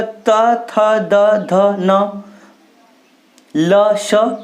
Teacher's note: आप इनका उच्चारण करोगे तो लगेगा कि आपको मैं दांत से बोल रहा हूं